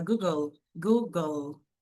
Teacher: Terminou em L e E. A gente faz esse som do L em inglês. L não é como no português brasileiro que a gente usa um som de U